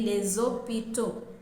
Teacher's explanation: If it is in plural and we are using a definite article, we will say les hôpitaux. And the last S in les is pronounced as Z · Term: liaison